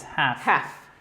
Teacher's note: La moitié, half, mais on prononce pas le L